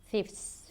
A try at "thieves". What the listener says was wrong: Thieves with a V. Thieves. Give me a little more vibration there.